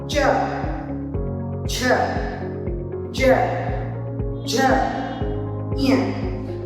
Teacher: च वर्ग का उच्चारण करते करते हमारी जीवा थोड़ा आगे की ओर स्पर्श करने लगती है। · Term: तालव्य